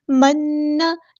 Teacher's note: گا، لام یہاں پہ لام قمریہ ہے، ظاہر کریں گے، منّا، نون پہ شد آ گئی ہے، اونا زمانی ہو رہا ہے کہ الف کے برابر رکیں گے ، منّا، لیکن زبر کو لمبا نہیں کریں گے، والسلوى، واو